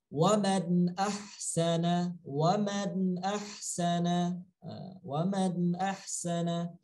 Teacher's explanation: tidak boleh dengung, tidak boleh keluar dari hidung. Tidak boleh keluar dari hidung. Harus jelas daripada tenggorokan. Tenggorokan langsung. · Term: izhar